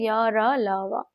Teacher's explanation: अंतस्थ व्यंजन में जीवा जो है उस स्थान को छूती है जो गले और मूर्धा के बीच में होता है